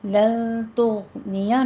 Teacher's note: لن تغنیہ میں نون ساکن کا قاعدہ اخفا کی اور غین کو آپ نے ادنا حلق سے ادا کرنا ہے، اس پر قلقلہ نہیں کرنا، تو پور بھی پڑھنا ہے اس کو، ٹھیک ہے۔